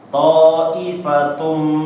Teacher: Ditahan terlebih dahulu karena mim bertasydid. Mim bertasydid harus ditahan ya.